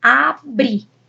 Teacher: É uma palavra oxítona, a sílaba tônica está na última, ó, abrir. A sílaba mais forte está na última, abrir.